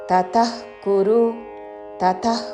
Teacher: విసర్గ తరువాత క తో పదము మొదలవుతున్నది కాబట్టి నాభి నుండి శ్వాస వదులుతూ చివరిన ఖ లాగా ఉచ్చారణం